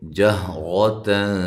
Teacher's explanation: یہ ہا جو ہے اس کو واضح نکالنا ہے اور را کو موٹا کرنا ہے